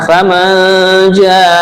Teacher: nun mati bertemu jim, namanya ikhfa ya, ikhfa hakiki